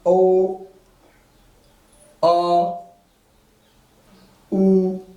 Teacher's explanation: पीछे से जीभ क्या हो जा रही है? उठ जा रही है ना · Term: पश्च स्वर